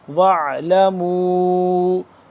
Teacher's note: وَعْلَمُوا پہ ہم نے اس کو لمبا کرنا ہے، ماد ہے، چھوٹی ماد ہے، 2 سے 3 الف کے برابر